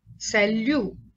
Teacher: T is not pronounced.